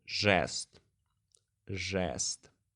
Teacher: As you can hear Е in this word doesn't sound as жЕст. It sounds like it's written with the letter Э.